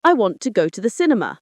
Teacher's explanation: Notice how want, go, and sin receive stress while the other syllables are reduced and quicker. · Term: stress timed language, stress-timed